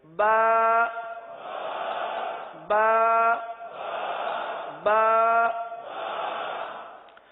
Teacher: با ہونٹوں کے، دونوں ہونٹوں کے تر حصے سے ادا ہوتا ہے